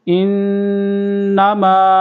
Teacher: ان، یہاں پر غنہ ہو رہا ہے، نون مشدد ہے، نون پر تشدید ہے تو یہاں پر غنہ کریں گے۔ انما، ایسے غنہ کریں گے۔